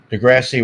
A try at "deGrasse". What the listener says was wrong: It's supposed to be an E at the end.